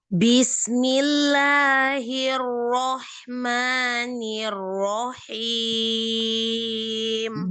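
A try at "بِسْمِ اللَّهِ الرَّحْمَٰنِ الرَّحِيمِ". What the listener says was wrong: Ya, harokat ba-nya jangan dipanjangkan. Jangan bis, tapi langsung bis.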